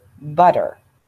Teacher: the voicing continues, and t becomes d, as in butter